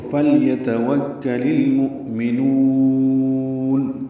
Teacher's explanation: ہے، لام کو لام سے ملانا ہے، لل اظہار قمری ہوگا، حمزہ ساکن جھٹکے سے ادا ہوگا · لل اظہار قمری ہوگا، حمزہ ساکن جھٹکے سے ادا ہوگا، اور نون میں نو کو لمبا کر دیں گے